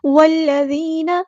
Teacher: والذین، ذال کو نرمی سے ادا کرنا ہے، اور یا جو ہے یہ یا مدہ آ گئی ہے تو مد اصلی کریں گے ہم یہاں پہ ایک الف کے برابر لمبا کریں گے